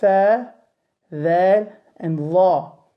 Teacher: The makhraj point for all of these 3 letters is the tip of the tongue meeting the upper incisors